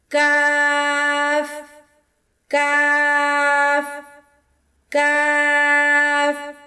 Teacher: کاف، قاف کے مخرج کے قریب ہی منہ کی جانب ذرا نیچے ہٹ کر ادا ہوگا۔ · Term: باریک کاف